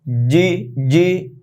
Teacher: জিব্বার মধ্যখান উপরে লাগিয়ে বলতে হবে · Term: জিম